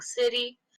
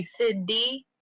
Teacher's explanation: It's a very well done portmanteau, especially because we all speak a dialect where instead of saying city, we say city. So kind of that glottal stop in the middle